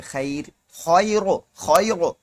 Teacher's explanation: را نہیں موٹا کریں گے، خیر پتلا پڑھیں گے · را ساکن سے پہلے یا ساکنہ ہو تو را باریک ہوگی ، تو اب پڑھیں گے خیر، خیرو، خیرو، را نہیں موٹا